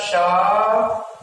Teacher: ये जो पहला सा है इसको तालव्य सा के नाम से जाना जाता है, क्योंकि इसका उच्चारण तालु से होता है, इसलिए तालव्य सा के नाम से जाना जाएगा